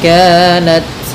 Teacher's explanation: dalam ta sedikit dikasih hamas karena sifat ta ketika sukun itu tampak hamasnya.